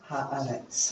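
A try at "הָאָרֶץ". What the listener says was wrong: yes. Eretz, usually it's spelled with two symbols,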